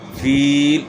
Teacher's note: یا مدہ ہے، یا ساکن سے پہلے زیر ہے تو اس لیے اس کو تھوڑا سا کھینچنا ہے